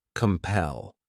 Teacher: This word has 2 syllables, and the stress is on that second syllable, compel. What it means is to force or drive or maybe even encourage somebody to do something, some course of action, to do something that you want them to do.